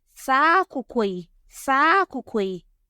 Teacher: the high tone of the final syllable of the prereferential modifier spreads its high tone onto the first syllable of the noun, which has lost its low tone. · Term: tonal spread